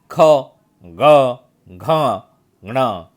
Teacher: तो बच्चों, वैसे देखा जाए तो हम बाराखड़ी जब देखते हैं तो उसमें क ये अपना अलग वर्ण है ना, एक अपना अलग वर्ग है जिसका उच्चारण करते समय हमें कंठ से करना पड़ता है। तो बच्चों, जितने भी क वर्ग में जो वर्ण है, ख, ग, घ, ङ, ये उच्चारण कंठ से होता है, तो ये इसको बोलते हैं कंठस्थ स्वर।